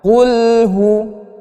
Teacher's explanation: Maka harus dimatikan lamnya tanpa menambah pantulan. Jadi kesalahan yang sering terjadi saat kita membaca suratul Al-Ikhlas itu qulnya memantul. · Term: lam sukun